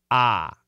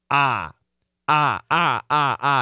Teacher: This is the short O, and the sound is ah. Your mouth is very open, it's just open as much as possible. Your tongue can be anywhere.